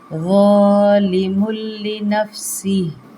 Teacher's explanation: یہاں پہ تنوین کے بعد لام آ رہا ہے، یرمالون کا قاعدہ بغیر غننے کے اس کو ملانا ہے